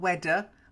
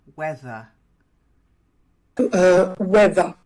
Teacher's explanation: you do tend to d instead of th. And that means you've got the tongue in the wrong place.